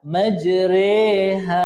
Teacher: kita menyebut baris atas condong kepada baris bawah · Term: bacaan imalah